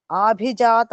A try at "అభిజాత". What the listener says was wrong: ఆ దీర్ఘ కాదమ్మ హర్సవం అభిజాత